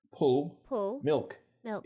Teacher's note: Sometimes you get the kind of L vocalization that you hear in London with words like pull and milk.